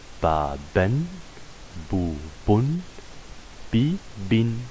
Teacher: vous lisez le mot et on ajoute un noun à la fin qu'on le prononce mais on ne l'écrit pas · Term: tanwin